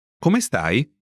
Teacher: Note the rising intonation to mark that it's a question.